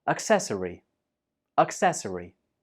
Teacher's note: This word has 4 syllables. Accessory, and the stress is on the second syllable.